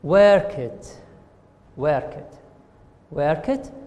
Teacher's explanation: زدنا اي دي ونطقنا زي التا